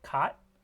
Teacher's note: the initial sound in the English word cot is a velar sound. It's a velar stop.